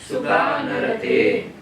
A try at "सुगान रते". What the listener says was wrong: सुगान नहीं कहना है, बस इतनी सावधानी रखिए। छोटा आ है उसको बोलना सुगान रते।